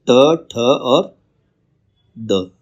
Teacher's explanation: मूर्धन्य ध्वनि जिसमें जो जीभ है ऊपर वाले तालु से टकराती है, मूर्धन्य ध्वनि होती है ट, ठ और ड